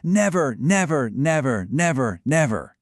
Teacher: That is five consecutive stressed syllables, five trochees. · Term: metrical collapse